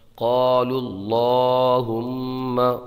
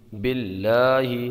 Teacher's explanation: یہاں اللہ کے لام کو باریک پڑھیں گے کیونکہ اللہ کے لام سے پہلے با پر زیر ہے ، اللہ کے لام سے پہلے والے حرف پر زیر ہو